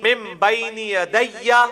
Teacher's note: نون ساکن کے بعد با ہے تو نون میم میں بدل جائے گا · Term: اقلاب